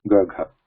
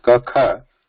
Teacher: Whereas ka kha, there is no nada. There is like a breath. So breath, just a muted breath is there. Ka kha. So this breath classification, these are called ghosha.